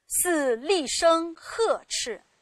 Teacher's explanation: 这个呵在这里是多音字，念第四声